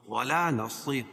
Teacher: صاد کو پر پڑھیں گے اور را باریک پڑھی جائے گی